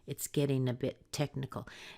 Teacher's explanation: watch out for the two T's together and then that nice soft D sound in getting